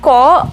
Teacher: ক যখন আমরা বলছি তখন সেটি উচ্চারণের জন্য কিন্তু আমাদের কণ্ঠের সাহায্য নিতে হচ্ছে, অর্থাৎ জিহ্বার মূল অংশের সাহায্য নিতেই হচ্ছে